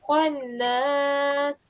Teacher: are you noticing that I'm giving a round mouth to it?